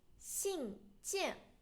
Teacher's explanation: So first of all, 信 件, both first tone.